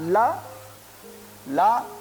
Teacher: ला का भी उच्चारण स्थान दंत होता है